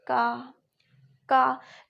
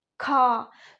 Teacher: जैसे अपन बोले खा और का है अपना अल्प प्राण। जब अपन का बोलते हैं तो मुख से थोड़ी सी वायु बाहर निकलती है, जैसे का। लेकिन अपन खा को बोले खा तो ज्यादा वायु मुख से बाहर निकलती है। · जब अपन का बोलते हैं तो मुख से थोड़ी सी वायु बाहर निकलती है, जैसे का। लेकिन अपन खा को बोले खा तो ज्यादा वायु मुख से बाहर निकलती है। इसलिए जिसमें ज्यादा वायु मुख से बाहर निकलती है वो महाप्राण होते हैं, और जिनमें कम वायु बाहर निकलती है वो अल्प प्राण होते हैं।